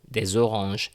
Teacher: as you can see the des here, des preceding a vowel, des oranges, des habitudes, des éléments. We have the z sound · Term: the liaison